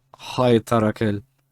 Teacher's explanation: that's a very hard h sound. It's not k